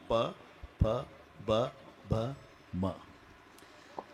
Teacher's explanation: मचा उच्चार वटाला ओठ लागल्याशिवाय होत नाही